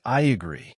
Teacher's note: A little Y sound is added. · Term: vowel plus vowel linking